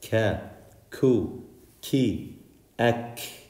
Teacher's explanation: the kaf, it is closer to the front of our mouth than the qaf. Ka, where the roof of our mouth is hard.